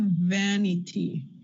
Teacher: So you have the word vain, and then you have vanity. When you add a suffix, an ending to the word vain, you get a lax sound, not a. That sound is the result of having a longer word, and English has a tendency to have words that last about the same, in terms of time.